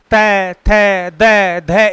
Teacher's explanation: कहां से होती है, दंत से। यानी कि जीभ का अग्रभाग, सिर्फ अगला हिस्सा है वो दांत के स्पर्श करेगा। तय, थ, द, ध, इस प्रकार से जो इसका जो उच्चारण किया गया वो दंती उच्चारण कहा जाता है इसको।